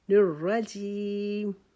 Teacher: الرجیم، الرجیم، نون کے نیچے زیر کو باریک کریں گے، لیکن آگے را جو ہے اس کو ہم موٹا پڑھیں گے کیونکہ اس کے اوپر زبر آ گیا اور شد کی وجہ سے رکاوٹ کے ساتھ اس کو ایک